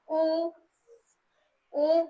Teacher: गोल हो जाएगा। देखिए उ बोला तो हमारे होठ कैसे हो जाएंगे? गोल आकार के।